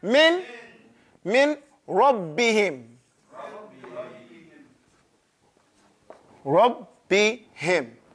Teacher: Dakhala shay fi shay. So the noon has completely entered into the ra. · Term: idgham